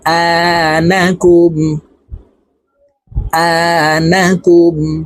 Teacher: মিম পেশকুম জজমলা হরফ পূর্বের হরকতের সঙ্গে একবার উচ্চারণ হবে তাই এই কাফ হরফটি জজমালা হরফ মিমের সঙ্গে একবার উচ্চারণ হবে